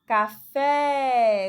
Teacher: Aí você observa aí que a sílaba tônica é o fé.